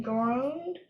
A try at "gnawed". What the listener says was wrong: That word there is gnawed. The G is silent. It's gnawed.